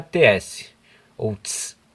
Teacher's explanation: em vez de pronunciar a letra T, sai como uma pronúncia TS, ou TS. Isso acontece sempre que o T é seguido pela vogal I. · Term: palatalização